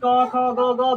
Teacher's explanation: कोई सा भी बोलते हैं तो उसका कहां से निकलता है आवाज कंठ से